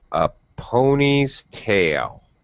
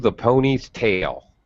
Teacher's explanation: it's much more of a smooth transition not stair step like compound noun pitch pattern